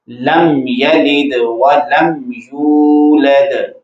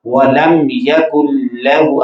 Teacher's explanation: میم کو ظاہر کر کے فوراً اگلا حرف جو ہے وہ پڑھا جاتا ہے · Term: اظہار شفوی